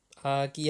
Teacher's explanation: 아기 할 때 모음이 두 개잖아요. 이 아는 후설 모음이고 이는 전설 모음이죠.